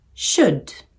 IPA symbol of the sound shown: ʃʊd